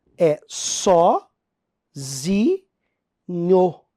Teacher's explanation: Porque a tônica é no zi.